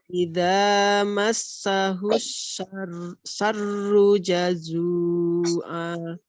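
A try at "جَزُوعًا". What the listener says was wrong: Zu-nya kepanjangan. 2 saja. Di ayun aja. Jazu'a. Jazu'a.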